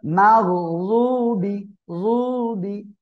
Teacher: এই যে রদ অক্ষরটা কিভাবে উচ্চারণ হবে, জিহ্বার গোড়ার কিনারা উপরে মাড়ির দাঁতের গোড়ার সঙ্গে লাগিয়ে উচ্চারণ করবেন।